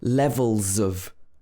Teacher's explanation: levels and of can connect together because it's a consonant and a vowel